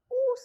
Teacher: Back, close, rounded, cardinal, vowel